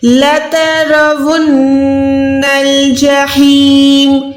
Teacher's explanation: نون کو ادا کرتے ہوئے ناک میں آواز کو ہولڈ کرنا ہے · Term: گننا